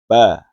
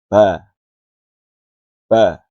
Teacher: Huruf ba letaknya di kedua bibir. Saat mengucapkannya, ada sedikit penekanan pada kedua bibir. Ba. Jenis hurufnya termasuk dibaca tipis dan jelas.